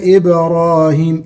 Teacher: إبراهيم الباء ساكنة مقلقلة